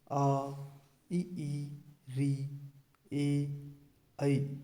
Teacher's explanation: इनका उच्चारण करते समय होठों की आकृति वृत्त के समान नहीं होती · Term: अवृत्ताकार स्वर